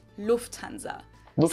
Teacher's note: So the emphasis is on the first syllable.